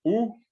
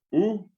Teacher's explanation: Es un ejercicio para que ustedes solamente distingan que son dos fonemas, son dos sonidos diferentes, uno oral y el otro nasal.